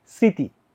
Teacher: কিন্তু তোমার এই যে স্মৃতি এটার মধ্যে কিন্তু মফলার উচ্চারণ হবে না, মফলার উচ্চারণ হবে না, মফলার উচ্চারণ হবে না, কিন্তু একটা নাসিক্য ভাব ছেড়ে যাবে, যার কারণে তোমার এই শয়ের উপর একটা চন্দ্রবিন্দু দিতে হবে, তাহলে এটার উচ্চারণটা কি স্মৃতি, একটা চন্দ্রবিন্দু দিতে হবে, কারণ কি, কারণ হচ্ছে এটা মফলা, ম একটা নাসিক্য ধ্বনি।